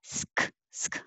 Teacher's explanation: I can make my S, sk, at the same time I'm making my K